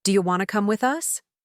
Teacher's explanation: In fast speech, do you turns into ja, and want to becomes wanna.